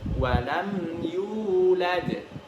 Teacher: yu di situ ada mad tabi'i, panjangnya harus 2 harokat.